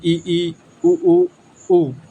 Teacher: यानी इनको बोलते हैं क्लोज, पूरा बंद रहना। जिन स्वरों के उच्चारण में मुख द्वार लगभग पूरा बंद रहता है उसे हम संव्रत कहते हैं